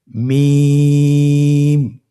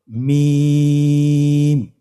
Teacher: হরফটির উচ্চারণ স্থান দুই ঠোটের শুকন স্থান থেকে উচ্চারিত হয়। এই যে আমরা দুইটি ঠোট দেখছি এটা যে শুকন অংশ আসছে সেখান থেকে হরফটি উচ্চারিত হয়। · মিম হরফটি উচ্চারণের ক্ষেত্রে অবশ্যই বারিক হবে, পাতলা হবে এবং 3 আলিফ টেনে উচ্চারণ করতে হবে।